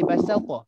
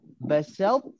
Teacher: Kita singgah sekejap je kat huruf ta ni. Singgah sekejap je. Jangan penuhkan dia.